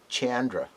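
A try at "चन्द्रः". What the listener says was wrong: The letters are Chandraha. Cha is a palatal letter. Because if you say Chandra, there is an elongation of the word cha. That is not in Sanskritam. It should be crisp and it should be clear.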